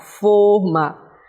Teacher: Observe que eu falo mais pelas narinas · observe que forma tem o acento fechado. O acento tônico ele é fechado.